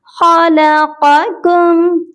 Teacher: इसमें देखिए दो क़ाफ हैं, एक मोटा और एक बारीक